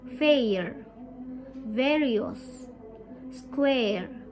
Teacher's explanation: as you say the air sound your mouth will start on the position of the a sound and finish on the position of the earth sound